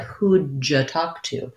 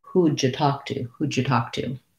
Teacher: when we're connecting the d and the yeah, it ends up sounding a little bit like a j. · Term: j sound